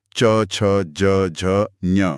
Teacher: इसके उच्चारण के लिए आवाज गले से थोड़ा आगे बढ़ती है, मतलब जीभ उठकर कठोर तालु को छूती है। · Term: च वर्ग